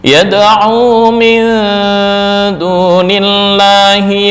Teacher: cara membaca ikhfanya lebih mendominasi dibandingkan ghunah